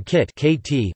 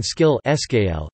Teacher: in kit [kʰɪt] the sound is aspirated, while in skill [skɪl] it is unaspirated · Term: aspirated form